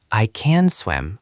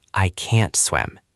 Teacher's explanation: In a sentence, can is usually short and quick, but can't has a very clear T sound at the end.